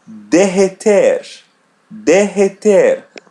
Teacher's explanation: When we have double R coming together, we pronounce it like H2.